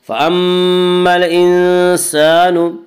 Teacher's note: فأما یہ مشدد غنہ ہوگا، غنہ کی مقدار 1 الف ہے۔